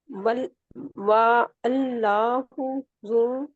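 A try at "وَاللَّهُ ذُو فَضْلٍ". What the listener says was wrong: نہیں نہیں وا اللہ نہیں ہے، یہ حمزۃ الوصل ہے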